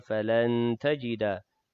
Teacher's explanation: nun mati bertemu dengan ta ikhfa hakiki, dengung juga 2 harakat